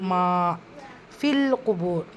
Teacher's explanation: மீமில் அலிஃப் மத்தா இருக்குது, 2 ஹரக்கத்தாலும் நீட்டம் கொடுத்து ஓதணும்.